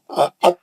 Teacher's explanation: تا اور دال ایک ہی جگہ سے نکلتے، زبان کی نوک اور سامنے کے دانتوں کی جڑ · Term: ایک ہی مخرج